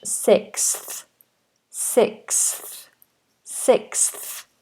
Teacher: it sounds and then we have a th after that so we have S and then we have like a k sound then we have an S sound and then a th sound